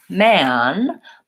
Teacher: when I'm saying the vowel in man, my mouth is more open.